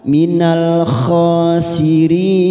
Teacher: sirin mat arid disukun kita samakan 4 harokat kita panjangkan